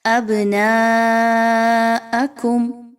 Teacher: ابناءکم، با پر جزم کا نشان ہے، با حروف قلقلہ میں سے ہے، یہاں پر با کو ہلا کر پڑھا جائے گا